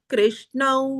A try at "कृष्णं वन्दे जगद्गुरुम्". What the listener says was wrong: अत्र कृष्णौ वकार अस्ति किल तद् वक्तव्यम्